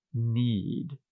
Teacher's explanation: need ends with a D sound and the D is a voiced consonant